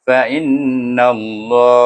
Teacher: baca dengan tebal. Sebab sebelum nama Allah nun baris di atas. Jadi bunyinya fa innallaha.